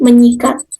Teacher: fonem S pada kata sikat diluluhkan dan disenyawakan atau bisa dikatakan digantingkan dengan fonem nasalnya yang ada pada prefiks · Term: peluluhan fonem